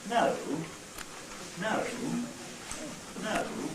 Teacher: If we've got one syllable, then obviously we have no choice. We start high, we go, or high-ish, we go down to low, and then we come up again within the same syllable. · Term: fall rise